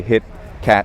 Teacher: This is different from, say, British English, which will say hit or cat, where it's a glottal stop. So we actually make the T sound in an American English. We say hit, cat, but we don't release it.